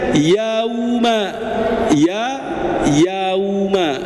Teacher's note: kita harus memanyunkan bibir karena bertemu dengan wawu